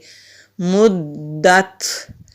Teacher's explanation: تا پر سانس کو جاری رکھیں گے، اینڈ میں جو ہلکی سی آواز آتی ہے اس کو ہمس کہتے ہیں، تو تا پر ہمس کریں گے، مدت۔